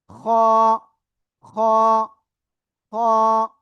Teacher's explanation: গলার শেষ ভাগ থেকে মোটা আওয়াজে উচ্চারণ করতে